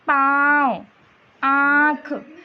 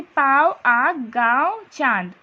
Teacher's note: अनुनासिक की ध्वनि नाक और मुंह दोनों में साथ साथ निकलती है।